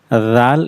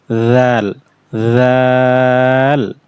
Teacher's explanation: এটা নরম করে উচ্চারণ করতে হবে জিহ্বার আগাটা উপরে দাঁতের সাথে লাগবে একদম নরম করে